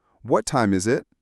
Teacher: Your voice should fall at the end. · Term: falling intonation